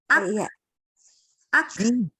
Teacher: Dia itu ketika sukun keluar udara. Ak, bukan ak, ditahan, ak, tapi lepaskan udaranya. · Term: hams